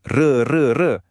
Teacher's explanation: at-takrir getaran khas ra, ra kat hujung lidah hanya untuk huruf ra